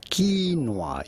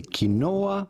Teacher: You do want to stress on the first syllable rather than the second one. Do not say kinoa, but rather right quinoa.